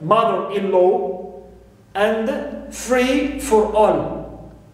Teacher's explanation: I stress mother in mother-in-law and free in free for all